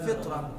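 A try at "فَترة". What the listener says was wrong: فتره على فتره بفتح الفاء، فتره من الرسل.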